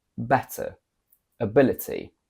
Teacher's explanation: we have the strong and full T sound when T is between vowels